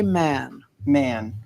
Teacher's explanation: normally with the Southie accent that a sound becomes nasal